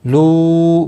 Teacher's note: مد منفصل ہے، تین الف کے برابر کھینچ کر پڑھیں گے